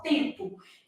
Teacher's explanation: Na palavra tempo, esse M é só nasal.